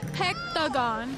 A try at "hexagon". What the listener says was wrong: She said hexagon. You're saying hectagon.